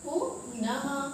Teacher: विसर्ग उच्चारण करते हैं तो हा वर्ण की आवृत्ति होती है, मतलब हा वर्ण निकलता है हमारे मुख से, ठीक है। मतलब इनका उच्चारण के समय इनकी ध्वनि हा के रूप में निकलती है।